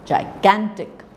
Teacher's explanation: So the gan part of it is more prominent than the first and the third syllables.